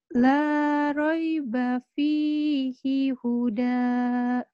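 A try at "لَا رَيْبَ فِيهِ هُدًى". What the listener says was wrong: Ya, di situ hinnya masih ada unsur sedikit panjang. La roiba fihi. La roiba fihi huda. Hi huda. Jangan panjang hinnya.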